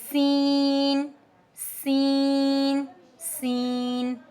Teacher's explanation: जुबान की नोक और दांतों के दरमियान से हमारे पास सीन अदा होता है · tip of the tongue near upper teeth · زبان کی نوک اور دانتوں کے درمیان سے ہمارے پاس سین ادا ہوتا ہے. Tip of the tongue near upper teeth, ٹھیک؟